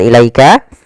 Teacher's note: bacaan lin yaitu bacaan yang lembut adanya fathah bertemu dengan ya sukun